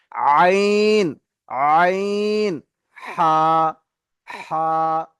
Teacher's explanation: 2য় নম্বর মাখরাজ আইন আর বড় হা, কণ্ঠনালীর মাঝখান দিয়ে